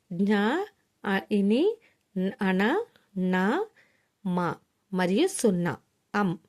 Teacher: నాసిక్యములు అంటే ఏంటండి? ముక్కు నుండి, అంటే ముక్కు సహాయంతో ఉచ్చరించేవి